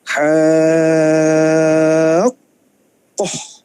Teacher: Baca ha tu 6 harokat, kemudian 6 harokat dulu, kemudian baru masukkan. Okey, baca ha 6 harokat dulu sebab ada mad · Bila masuk tu kita sekatkan suara kita sebab kita dah masuk ke dalam huruf qaf. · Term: Mad lazim kalimi musaqqal